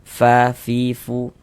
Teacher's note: mengucapkan huruf fa itu ada nafas yang mengalir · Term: hamas